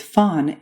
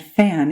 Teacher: When you say fawn, your tongue is low and far back in your mouth, and when you say fan, your tongue moves forward